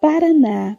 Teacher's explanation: por isso tão acentuadas observem todas as palavras são oxítonas tônica Ou seja a última sílaba é a mais forte